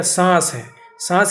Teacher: سانس کے بھی نون کو آپ صاف کر کے نہیں پڑھ پاتے، بالکل وہ چھپی رہتی ہے۔ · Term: نون غنہ